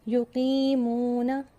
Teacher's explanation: قی کو ہم کھینچتے ہیں، یا ساکن سے پہلے زیر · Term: یائے مدہ